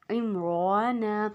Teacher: اب را کو ہم زیادہ کھینچیں گے اور باقی 2 حرکت کو برابر کھینچیں گے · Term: کھڑی زبر